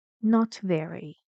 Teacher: so it has a change in Pitch falling and you see you say this on a level like normal middle intonation not Rising not falling